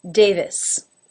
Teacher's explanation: There's not really a sharp V sound in there. Davis. But if you watch my lip, you will see that it does come up to make that position.